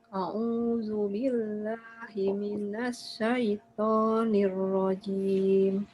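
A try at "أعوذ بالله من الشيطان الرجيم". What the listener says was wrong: Sya-nya jelaskan. Sya. Minasya.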